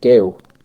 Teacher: You've got the G, you've got the vowel sound, and almost a W at the end of it.